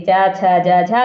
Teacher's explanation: चा, छा, जा, झा क्या है? स्पर्श संघर्षी व्यंजन है।